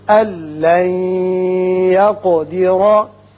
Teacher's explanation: نون ساکن کے بعد جب لام آئے تو یہاں ادغام کرتے ہیں لیکن بغیر غنہ